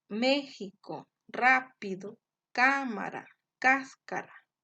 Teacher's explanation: es decir que su sílaba tónica va a estar en el antepenúltimo lugar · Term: esdrújulas, esdrújulas o proparoxítonas